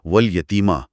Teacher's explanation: ये की आवाज जबान के दरमियानी हिस्से से निकलती है जो लाम की नोक से मुख्तलिफ है।